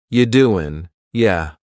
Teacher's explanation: The word you is reduced to ya.